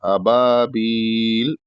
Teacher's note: तन अबबा तन अबबाबील अबबाबील यहां बा के बाद अलिफ है पहला बा के बाद तो हल्का सा खींचना है बहुत ज्यादा नहीं खींचना है मद नहीं होना चाहिए · जब बील को खींचेंगे तो तीन से चार अलिफ के बराबर खींच के रुकेंगे · صرف ایک الف کے برابر کھینچنا ہے، ابابیل اس طریقے سے.